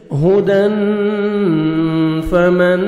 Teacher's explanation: یأتینکم منی ہدن ہاں کو اچھی طرح ادا کریں گے. تنوین کے بعد 15 لیٹرز میں سے فا آ رہے ہیں. یہاں پہ آپ نے اخفا کرنا ہے. نوز میں ساؤنڈ لے کے جائیں گے.